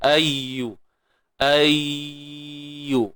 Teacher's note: ya ni bersifat rakhawah. Suara yang terlepas. Jangan tahan dia.